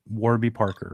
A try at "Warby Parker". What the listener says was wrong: Warby Parker. You say it like Arby's. Warby. They're not pronounced the same.